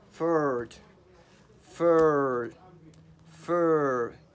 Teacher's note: your tongue it is not also back it is in the middle and your mouth is relaxed too